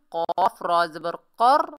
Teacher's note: कौफ को मोटा अदा करेंगे, रा मुशद्दद को मजबूती और जमाव से पढ़ेंगे।